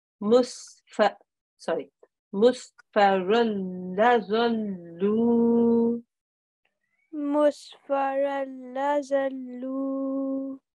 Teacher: we follow straight afterwards by a lam mushaddad, so we make no nasal sound.